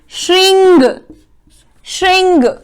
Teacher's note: दोनों में अनुस्वार है, जिससे ङ की ध्वनि निकलती है